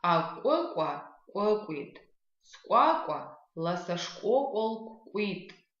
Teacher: Звук К, это мы произносим, отталкиваясь от того, как мы произносим звук К, округляем губы и получаем звук К